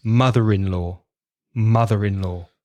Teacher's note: you've got a consonant at the end of mother there's a vowel sound at the beginning of in so you've got that connecting sound